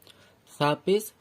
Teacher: সা বলার সময় অবশ্যই জিভ বার করে বলতে হয় সা